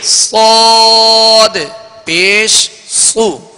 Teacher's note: اس کو پر پڑھیں گے مگر ہونٹوں کو گول نہیں کریں گے، یعنی زبر اور زیر میں. اور پیش صاد پر تو پیش کی وجہ سے پیش کی ادائیگی میں ہونٹ گول ہوں گے، اور اس میں سیٹی کی آواز بھی پیدا ہوگی